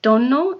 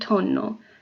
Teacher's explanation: the D voiced and the T is not resorting in a small variation in sound in Italian D and